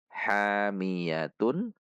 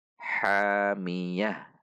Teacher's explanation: Ta dhammah tanwin tun. Namun karena di akhir kalimat maka disukunkan sehingga ta marbutah ini dibaca menjadi huruf ha. Hamiyatun menjadi hamiyah.